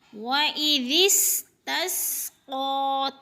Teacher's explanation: سین کو سیٹی کی آواز میں سختی سے ادا کرنا ہے۔ وَإِذِ اسْتَسْقَىٰ، تس کی سین سیٹی سے، قاف پر حروف میں سے ہے، موٹے حروف میں سے ہے، اور اس کے اوپر کھڑی زبر ہے، یعنی کھڑی زبر کو ایک الف کے برابر کھینچ کر پڑھنا ہے۔